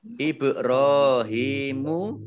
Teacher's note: Ibrahimu ba sukun bacaan qalqalah ya, dimantulkan